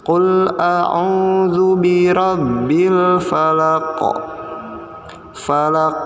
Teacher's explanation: bacaan Qalqalah Nah Lihat huruf yang diberi warna hijau cover kosnya harus dibaca dengan dipantulkan karena kondisinya sukun atau mati